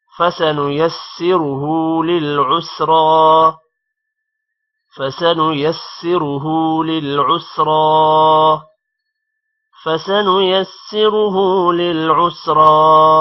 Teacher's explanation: لِلْعُسْرَى را پر کھڑی زبر ہے اور را موٹا بھی ہوگا، کھڑی زبر کی وجہ سے تھوڑا لمبا بھی ہوگا · فَسَنُيَسِّرُهُ را موٹا ہوگا، ہا پہ الٹا پیش ہے تھوڑا لمبا ہوگا